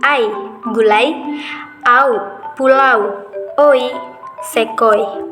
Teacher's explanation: Diftong naik, yaitu terjadi jika vokal yang kedua diucapkan dengan posisi lidah menjadi lebih tinggi daripada yang pertama